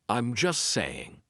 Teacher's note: We drop that T. We do not pronounce it.